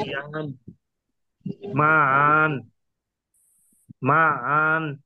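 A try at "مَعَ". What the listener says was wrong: মা আন। মাতে টান হবে, আতে না। মা আন।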